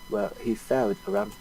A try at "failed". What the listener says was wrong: It's failed, not felt.